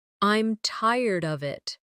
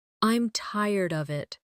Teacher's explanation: I'm tired of it with of sounding almost like uh These weak forms are part of the rhythm of English.